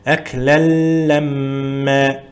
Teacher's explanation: Әклән ғой негізі әсілінде. Әклән, бірақ тануин ләм әрпіне жолыққандықтан идғом қылынады. Яғни ғұннасыз идғом қылынады. Әкләләммә. Идғом қылып шәддәмен оқимыз.